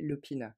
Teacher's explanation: c'est écrit Lovina, mais en indonésien, ça se prononce avec un P